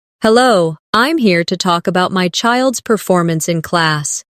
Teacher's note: Stress performance, so it's clear what you're discussing.